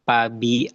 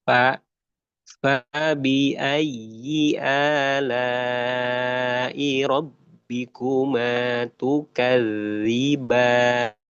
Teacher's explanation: Jadi tidak baca pabi, tidak baca pab ya, tapi ee dikeluarkan ujung eh dikeluarkan apa namanya itu perut bibir bawah nempel ke ujung gigi seri atas.